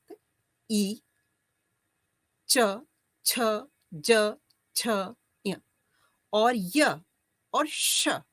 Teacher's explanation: ई च छ ज छ य और य और श इनका उच्चारण स्थान तालु होता है